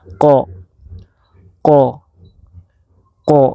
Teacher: Jadi ko ini termasuk huruf qalqalah juga, yang apabila dia sukun maka dia memantul.